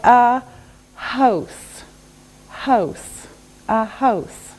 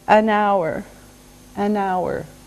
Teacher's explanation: H is a consonant, but sometimes we don't say the H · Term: silent